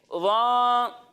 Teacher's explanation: ضا حروف مستعلیہ میں سے ہے، تو اسے ہم موٹا کر کر پڑھیں گے. اور یہ بھی جان لیں کہ ضا میں ذال کی طرح سیٹی کی آواز نہیں آئے گی